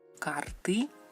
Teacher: la lengua te retrae más hacia la garganta y el sonido va más desde la garganta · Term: letra y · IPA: ɨ